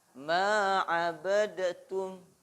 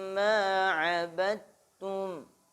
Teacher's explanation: Ini namanya idgham mutajanisain ya. Jadi dalnya enggak dibaca, langsung masuk ke huruf ta. Kurang tepat kalau dibaca ma'abadatum, keliru ya.